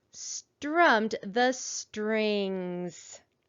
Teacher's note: digraph th and we know in the word the digraph th makes its voiced sound